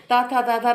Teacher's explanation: जब आप बोलेंगे तो आपकी जीभ दांतों से लगेगी, ता था दा, तो तभी निकलेगा। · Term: दंत व्यंजन